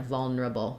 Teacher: But people will often reduce it to vulnerable, where instead of neurable, they'll do kind of more like vulnerable, reduce it down to 3 syllables, vulnerable, so the neura becomes almost like there's no vowel in there, vulnerable.